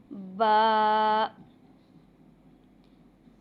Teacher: इसके साथ अलिफ भी अदा किया जाएगा और इसको थोड़ा लंबा भी अदा किया जाएगा। बा को अदा करते हुए होठों को खुशकी हिस्से से अदा किया जाएगा। जहां से हंठ हमारे खुश होते हैं वहां से मिलाकर अदा किया जाएगा।